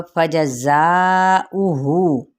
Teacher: ज़ा यहाँ पे सफ़ीद करते हुए 4 हरकत खींचेंगे, हमज़ा की पेश को लंबा नहीं करेंगे, जबकि हु की वाव मद्दा का कायम मुकाम है तो इसको हम एक अलिफ के बराबर खींचेंगे।